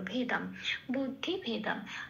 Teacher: ভেদামে ভে আর অনুস্বর আছে শব্দের শেষে, সেজন্য ময় হসন্ত দিয়ে সেটা প্রতিস্থাপিত হলো